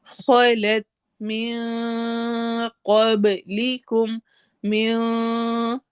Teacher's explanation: چونکہ قاف آگے ہیوی ہے اس لیے ہم غنہ بھی ہیوی کریں گے. اس کو من نہیں پڑھیں گے، اس کو ہم من، کیونکہ آگے قاف آ رہا ہے.